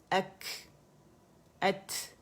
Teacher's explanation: اگر میں بغیر ہمس کے کروں ات اک, آپ کو پتہ ہی نہیں چلا کون سا لیٹر تھا. ات, تو اس میں ہوا چل ہمس ہوگا, ہوا باہر نکلتی ہوئی فیل ہوگی